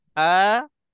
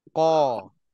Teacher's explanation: A tu makhrajnya di pangkal halqum, Qa tu di pangkal lidah kan